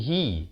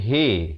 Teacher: Ha bila baris bawah kita bunyi hi. bukan bunyi he. Jadi bila bertemu mim jadi him.